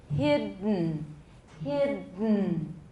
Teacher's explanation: 改道, and it's going to come out of that's how nasal plosion works. So say hid, but then don't let your tongue down, and then push the air back so it comes out through your nose, and then release the n. Okay, I'll perform it so you can hear how it should sound.